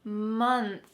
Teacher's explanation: Notice what my tongue is doing at the end of this word. It's out between my teeth and there's some lovely air streaming out.